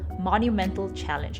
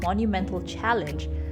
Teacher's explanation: what the americans do is they have a different type of t sound which is a monumental challenge it's almost like a d · It's almost like a D, but it's a T sound. So when you have that T sound, monumental challenge, the word rolls out of your mouth more smoothly.